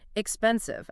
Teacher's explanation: If you stress the first syllable, it completely throws off the rhythm and immediately sounds non-native. And you also need to keep that clear buzzing V sound.